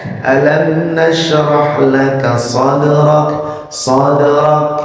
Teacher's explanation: Sadraka, dalnya harus terdengar qalqalahnya, walaupun qalqalah sughra ya.